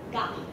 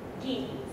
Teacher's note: In many dialects of Japanese, the underlying G is realized as stop in word initial position, but as nasal word internal.